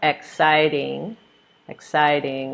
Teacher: we have three syllables in the word and we're stressing the second syllable in the word